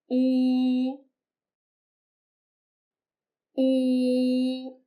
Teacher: When you pronounce this final, your mouth is fully rounded. 呜 The oo sound is similar to the double O in the English word boo. · Note that when pronouncing this, the opening of your mouth is narrow, and you need to keep your lips fully rounded throughout.